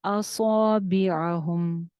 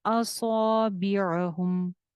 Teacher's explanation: स्वाद मोटा है, अलिफ के साथ है, सबसे हैवी सबसे मोटा। असौबिअहुम, स्वाद के साथ का अलिफ भी मोटा करें।